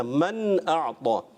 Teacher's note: نون کو واضح کر کے غنہ نہیں کرنا